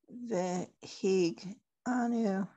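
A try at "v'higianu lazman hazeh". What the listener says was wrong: V'higi anu. That one actually has an extra syllable.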